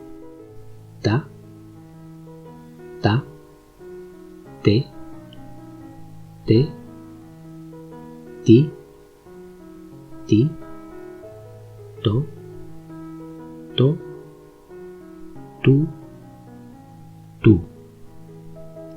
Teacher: T is also non-aspirated, and practically no air should come out of our mouth when pronouncing it.